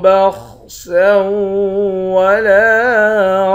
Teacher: سین کو واو کے ساتھ ملا کر یہاں ادغام کر دیں گے۔ لام کے بعد الف ہے، ایک الف کی مقدار کھینچیں گے۔